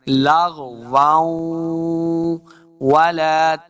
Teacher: ہم نے اس کو پڑھنا ہے۔ واو، واو دو زبر واو، واو غنہ کریں گے کیونکہ واو اگلی جو ہے یہ حروف جر ملون سے ہے، تو غنہ کے ساتھ پڑھیں گے